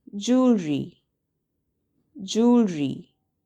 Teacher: There are only 2 syllables and the stress is on the first syllable.